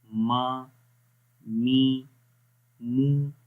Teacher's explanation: جب میم کو پڑھتے ہیں تو آواز ناک کے اندر بھی تھوڑی سی گونجتی ہے، ٹھیک ہے، تو اس وجہ سے اس کی آواز ناک میں بھی رہے گی اور ہونٹوں سے بھی.